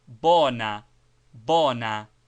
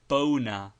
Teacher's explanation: like o in horse, not dip thonged, but pronounced purely and rather shortly